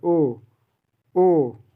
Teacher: ओ जब बोलेंगे कंठ से भी आएगा और ओठों से भी आएगा।